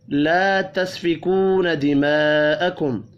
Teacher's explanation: لا الف مدہ ہے، تسفکو واو مدہ ہے، دونوں کو ایک ایک الف کے برابر کھینچ کر پڑھیں گے. دماءکم بڑی مد کو 5 الف کے برابر کھینچ کر پڑھنا ہے.